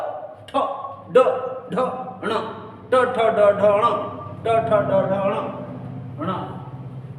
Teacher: ठीक है, इनका उच्चारण स्थान होता है मूर्धा। मूर्धा ट, तालव्य से अंदर की तरफ हम जहाँ उच्चारण कर रहे हैं वहाँ हमारी जिह्वा स्पर्श कर रही है